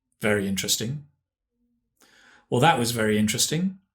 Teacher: Notice the intonation is quite flat